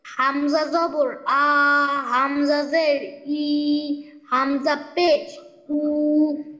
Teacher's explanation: কণ্ঠনালী বা হলের শুরু হইতে উচ্চারিত হয়